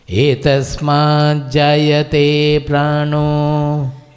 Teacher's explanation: So while pronouncing we will say etasmat jayate pranaha, that visarga gets dropped and okara comes because it is followed by ma, which is a soft consonant. But when we split, we may say pranaha also.